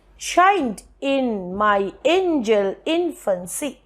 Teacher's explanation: the word infancy usually has stress only on the first syllable, that is in. We do not stress on fancy. Therefore, the last foot is again pyrrhic, the first foot is trochaic, and the rest of the line is in iambic.